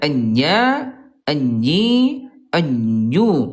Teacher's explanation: huruf jim ayah bunda, dia tempat hurufnya tengah lidah nih, tengah lidah. Ayah bunda disentuhkan ke tengah langit-langit